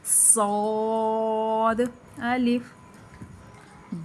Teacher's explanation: اس کو موٹا بھی پڑھنا ہے اور سیٹی بھی ظاہر کرنی ہے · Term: حروف مستعلیہ